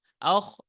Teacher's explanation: খটা এখানে আপনি যখন ধরবেন তখন তো এটা মুস্তালিয়ার কারণে এটা মোটা হবে। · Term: মুস্তালিয়ার হরফ